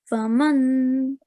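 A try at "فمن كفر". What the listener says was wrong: I can hear clear noon sound. Try to hide it.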